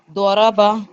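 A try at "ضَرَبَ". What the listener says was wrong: हाँ, एक नंबर।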